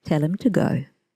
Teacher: As you can see, the grammatical words him and to are unstressed and have a weak form when pronounced inside a sentence. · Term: weak forms